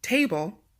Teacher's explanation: For number 1, table, the TA is stressed.